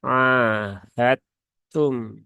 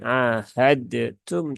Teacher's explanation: tnya ketika membaca [Musik] ahadum ya bukan ahadtum tapi um jadi dalnya dianggap tidak ada karena peleburannya sempurna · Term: idgam yang Kamil